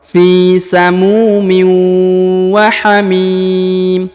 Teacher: Huruf tanwin in bertemu dengan waw bertasdid lagi ya, maka ditahan, ditekan, didengungkan 2 harokat